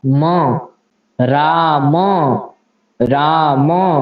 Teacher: म है जैसे, तो म का उच्चारण कहाँ से होता है, ओंठ से होता है। तो म का उच्चारण ओंठ और नासिका यानी नाक दोनों से होता है। म, राम, राम, इस प्रकार से उच्चारण।